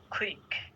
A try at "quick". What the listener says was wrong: ক বলবা না, খ বলবা। কুইক